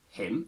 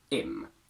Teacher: As you can see, all these weak forms have the H sound in brackets, meaning that you can decide whether you want to use it or not. So the weak form of him can be him, just like its strong form, or simply im